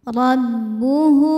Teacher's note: Cara bacanya ra dibunyikan dengan tebal dengan cara menaikkan pangkal lidah kita. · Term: tafkhim